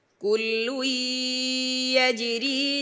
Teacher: ইদগাম হয়েছে কিন্তু খাইশুম থেকে আদায় হয়নি